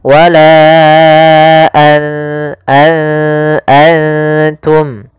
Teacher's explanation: Maka apabila ada nun sukun atau dia huruf yang tanwin, an, in, un, karena tanwin dan nun sukun itu sama bunyinya, kedua-duanya adalah bunyi n, maka ketika bertemu ta, nunnya disamarkan ke huruf ta, an langsung kepada makhraj daripada makhraj huruf ta. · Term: ikhfa